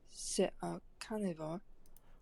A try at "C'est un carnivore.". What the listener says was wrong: I'm kind of hearing like carnivore. Like carnivore. I'm not really hearing much of the R sound. You don't have to make it super exaggerated, but you kind of want like an English H, but a little harsher. So it's going to be a little also harsher than, say, like a Spanish ha ha.